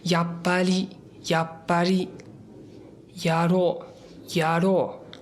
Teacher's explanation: o R ele tá bem mais suave, ele começa a aparecer com L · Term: R japonês